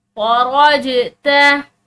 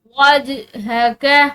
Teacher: वा के बाद जो ये जीम है ये हरूफ क़लक़ला में से है तो इसको हिलाते हुए पढ़ेंगे।